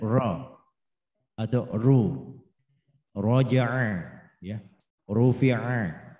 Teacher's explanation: bila ra dibaca dhamma atau dibaca fathah, maka posisinya adalah taghlil. Tebal, berat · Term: tafkhimur ra